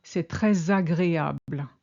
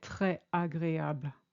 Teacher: After très, you have to link when there's a vowel.